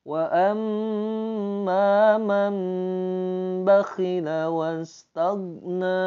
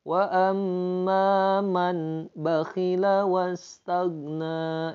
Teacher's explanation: karena ini hukumnya iqlab, nun mati berhadapan dengan huruf ba, maka nunnya dirubah menjadi mim